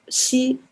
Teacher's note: So for the X, I'm getting somewhere between S and Sh, so kind of a S. It's more like a middle of S and Sh. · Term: fricatives